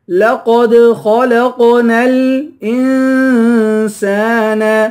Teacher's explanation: حمزے کو نون سے ملا کر نون پر اخفا کریں گے، سین کو 1 الف کی مقدار کھینچ کر پڑھیں گے، الف حروف مدہ ہے۔